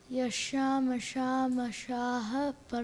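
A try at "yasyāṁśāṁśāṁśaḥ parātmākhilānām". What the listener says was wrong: No, you missed the sham. Try it again.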